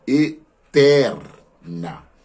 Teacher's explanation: A palavra eterna, nós temos a sílaba tônica na segunda sílaba, eterna. Ter, no caso, é a sílaba tônica.